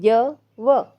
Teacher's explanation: अर्ध स्वर किसको बोला जाता है? य और व को। क्योंकि ये संघर्ष हीन होते हैं। इनमें बोलने में टाइम ही नहीं लगता।